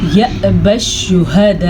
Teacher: یا کے اوپر حمزہ کے اوپر ساکن ہے تو ہلکا سا جھٹکا ہوگا